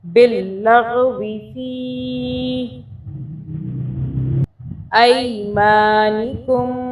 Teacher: چھوٹی مدہ ہے، اس کو 3 انگلیوں کے برابر کھینچ کے پڑھیں گے